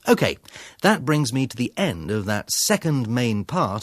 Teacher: His intonation falls, the pitch and music of his voice get lower, and he gets quieter before he introduces the next section. His intonation then rises again.